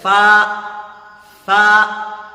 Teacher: فا جو ہے دانت کا کنارہ اور یہ ہونٹ کی تری جو ہے، جو بھیجا ہوا حصہ ہوتا ہے، اس میں لگائیں گے تو نکلے فا۔